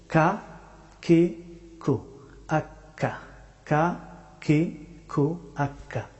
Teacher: কাফ হরফটি উচ্চারিত হয় জিহ্বার শেষের অংশ থেকে তবে একটু সামনের দিকে আগ বাড়িয়ে কাফ হরফটি উচ্চারিত হয় আওয়াজটা দেখুন কাকে কু আক্কা কাকে কু